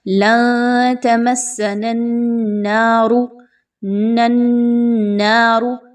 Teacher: ایک نون کو دوسرے نون کے ساتھ اسی طریقے سے مضبوطی کے ساتھ ملائیے اور نون مشدد کا غنہ کیجئے۔ اس کے بعد الف مدہ نون، الف زبر نا، اس کی ادائیگی کیجئے۔